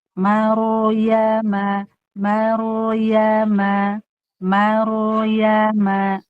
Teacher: Maknya tipis, ro-nya tebal. Jangan mimnya ke bawah tebal seperti maru. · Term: ro sukun sebelumnya fathah